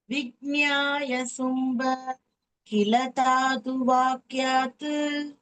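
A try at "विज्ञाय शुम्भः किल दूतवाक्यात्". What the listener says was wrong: தாத்து இல்லடா, தூத. தாத்து இல்லப்பா, தூத.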